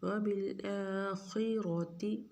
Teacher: خا کو اور را کو دونوں کو موٹا پڑیں گے